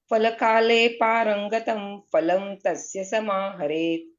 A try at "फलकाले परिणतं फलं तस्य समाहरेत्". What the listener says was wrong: पारंगतम का है, परिणतम है। उल्टा पुल्टा मत पढ़िए, फिर से पढ़िए,